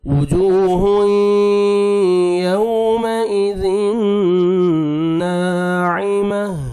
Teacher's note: برابر۔ عین کو اپنے صحیح مخرج سے ادا کرنا ہے، ناعمہ، تا کو ہا میں چینج کریں گے تو لاسٹ میں ہا کا ساؤنڈ آنا چاہیے